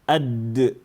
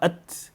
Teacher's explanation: The difference is there's the breath that comes after the ta.